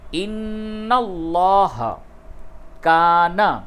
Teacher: نون مشدد ہے، غنہ ہوگا، لام کو پر کر کے پڑھیے